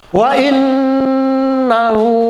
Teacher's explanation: Wa innahu nah itu dibaca gunnah berdengung. Hu-nya mad silah.